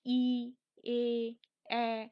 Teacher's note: অর্থাৎ আমরা যেমন দেখলাম প্রসারিত স্বরধ্বনি কি, প্রসারিত স্বরধ্বনি যখন আমরা উচ্চারণ করছি, যেমন ই, এ, এ, তখন কি হচ্ছে, ওষ্ঠের আকৃতি অর্থাৎ ওষ্ঠ ও অধর প্রায় হা হয়ে আসছে, অর্থাৎ প্রসারিত হচ্ছে